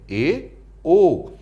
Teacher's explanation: अर्धसंवृत वे स्वर जिनके उच्चारण में मुख संवृत की अपेक्षा कुछ अधिक खुलता है